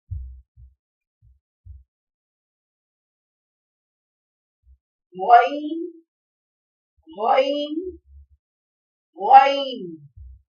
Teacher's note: حلق کے شروعی حصے سے جو منہ کی طرف ہے غین ادا ہوتا ہے